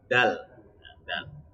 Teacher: dal itu ujung lidah, ini ujung lidah ini ya, itu menekan ke tempat tumbuhnya gigi seri yang atas. Di dalam tempat tumbuh gigi seri.